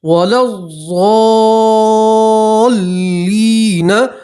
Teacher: لام کو سیدھا آپ ضاد سے ملائیں گے، یہ الف اور یہ الف اور لام نہیں پڑھیں گے